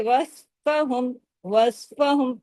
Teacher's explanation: स्वाद को हमने जमाया क्योंकि सिर्फ पांच हरूफ पर कलकला होता है बाकियों पर नहीं होता